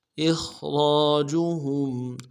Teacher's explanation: हमज़ा को खा के साथ मिलाना है, खा को मोटा अदा करेंगे, रा को मोटा अदा करेंगे, रा के साथ अलिफ मद्दा है, एक अलिफ दाल में खींचेंगे, इखरा रा।